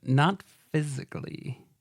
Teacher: you really had to put the vocal fry on it to sell it